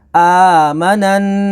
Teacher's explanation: اب یہاں پر نون مشدد ہے، یہ دیکھیں نون کے اوپر تشدید ہے تو یہ نون مشدد ہے، اس میں غنہ ہوگا، اور الف سے پہلے زبر ہے تو الف مدہ ہوگی۔